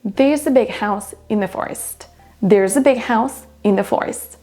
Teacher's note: Quand je le dis vite, vous allez presque seulement entendre big house forest.